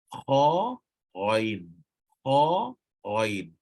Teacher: bahagian permulaan lidah bersama langit berdaging